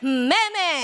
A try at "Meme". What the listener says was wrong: Hindi nga meme nga ni, it's meme. Meme. Para siyang mama. Pero ginawa mong i, kaya ang tunog ay